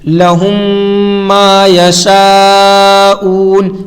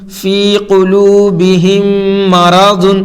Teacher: میم ساکن کے بعد میم آئے تو میم کو میم سے ملا کر غنہ کے ساتھ پڑھا جائے گا